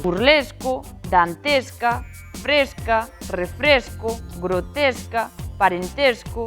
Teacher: Pois que as vogais tenden a pecharse. As palabras que terminan en esco ou vesca son con E pechado.